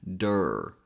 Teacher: we got to bring the tongue a bit back and put a little bit of pressure on the back of the tongue to make that R sound.